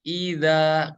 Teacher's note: huruf zal tempat keluarnya dari ujung lidah kita nempel ke ujung gigi seri yang atas.